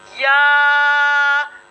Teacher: या का जो मखरज होगा वो ज़बान के दरमियान और ऊपर के तालु के दरमियान से ये हर्फ अदा होगा